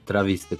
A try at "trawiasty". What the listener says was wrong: Powiedziałeś trawisty, a nie trawiasty.